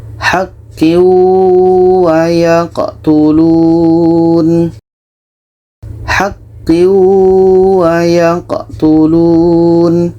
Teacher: Tanwin kita masukkan ke wau dan diiringi dengan dengung. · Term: idgham bi ghunnah